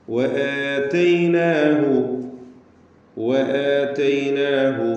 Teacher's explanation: വാവ് രണ്ട് ചുണ്ടുകളിൽ നിന്ന് തന്നെ വരണം